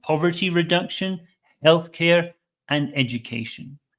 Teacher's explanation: reduction Healthcare and education this is a common pattern in English three items the first two in a list go up and the last one comes down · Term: interation should go up